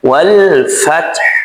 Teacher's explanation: wal fath baca mengalir sedikit karena lam di sini memiliki sifat tawassud ya wal fath di huruf ta sukun selanjutnya huruf ha di sini disukunkan cara membacanya wal fath pastikan Ha di sini tetap mengalir karena ha ini bersifat rakhawah.